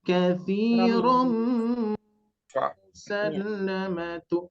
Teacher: pertemuan tanwin bertemu mim itu adalah gunah ya, ditekan, ditahan ya